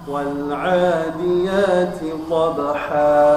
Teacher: ada huruf ta hamas, maka hurufnya dikeluarkan udara sedikit